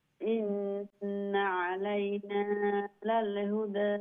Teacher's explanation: নুন মুশাদ্দাতুল গুণ হইছে এরপরে নুন জবরের যে না আর একটু শর্ট করবা